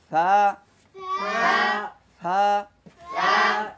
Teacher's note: জিহ্বার আগা সামনের উপরে 2 দাঁতের আগার সাথে লাগিয়ে সা।